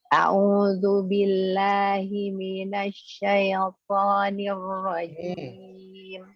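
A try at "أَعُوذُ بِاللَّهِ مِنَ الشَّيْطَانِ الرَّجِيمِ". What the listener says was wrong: Masih kecepatan syai-nya. Nah, dirasain lagi ya. Dirasain lagi coba. Jadi ya dialirkan sesuai dengan sifat-sifatnya.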